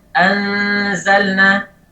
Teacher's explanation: Karena ada min ghilaqi makhrajin nun. Karena makhraj nun tidak tertutup, karena posisi lidah tidak menyentuh ke langit-langit. Makanya ada suara yang keluar dari mulut. Ini suara dari mulut.